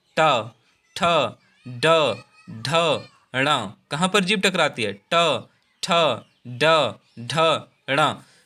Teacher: यानी जीभ जो है हमारी वो हमारे मूर्धा में टकराती है। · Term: मूर्धन्य व्यंजन